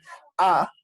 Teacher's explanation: Las vocales, por decir, A, mi boca está abierta, A, mi lengua está en la mitad